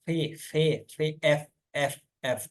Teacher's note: Sound articulated by the lower lip placed against the upper teeth are called G लेबोडेंटम, ठीक है।